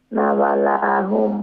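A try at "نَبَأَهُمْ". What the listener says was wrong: নাবা, ওইটা লাম ওইলে অন্যদিকে নেক্সটে দিয়া লেফটে দিয়া কানেক্ট থাকতো, জয়েন্ট থাকতো। নেক্সটে দিয়া জয়েন্ট না থাকলে এটা আলিফ, স্পেস থাকে যদি তাহলে আলিফ, আর যদি স্পেস না থাকে তাহলে লাম। এটা নাবা আহুম বিল হক। জি, ওইটা মনে রাখবেন, আলিফ আর লাম।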